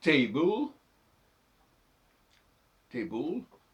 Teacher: on prononce pas le E final ça c'est à la française